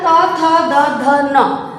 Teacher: आपकी जीभ आपके दांतों के पीछे उसकी जड़ों में जाकर के टच होती है।